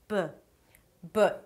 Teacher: A B is a stop sound where both lips touch together. 'b' 'b' Even if they touch really softly.